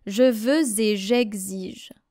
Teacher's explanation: So you have to link veux and et here.